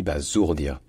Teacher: le S en français, entre deux voyelles, ça se dit ze